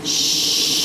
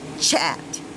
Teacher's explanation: now when you make the sound of CH it stops